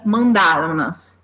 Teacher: o fato desse verbo terminar em som nasal, esse ou em, né, o som nasal faz com que eu tenha que acrescentar esse N, justamente porque seria difícil de pronunciar.